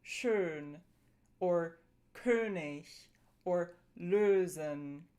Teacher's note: We've got the long, tense version, that's Ö, as in schön, or König, or lösen.